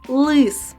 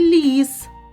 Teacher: у слові лис звук л звучить твердо А у слові ліс ль звучить м'яко Тож у слові лис перший звук твердий приголосний а в слові